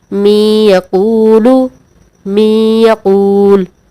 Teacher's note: ادغام مع الغنہ ہوگا، یعنی غنہ کر کے پڑھیں گے۔ مثلا می یقولو، می یقول، نون ساکن ہے، نون ساکن کے بعد حروف یرملون میں سے یا آ رہا ہے، ٹھیک ہے۔